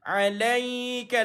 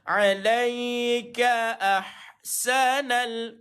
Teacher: Lam di atas jumpa dengan ya sukun, ada sifat lin tuan-tuan, lembut bacaan dia tuan-tuan.